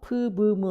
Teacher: 무는 어디에서 나는 소리예요? 아까 프, 브, 무 할 때 양입술에서 나죠. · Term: 바일레이비얼 네이절